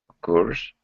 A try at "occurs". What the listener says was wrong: Then almost an E sound. Occurs. It almost has an E sound instead of the U sound. It sounds like occurs.